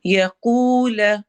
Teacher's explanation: یقول قاف ہیوی اور واو مدہ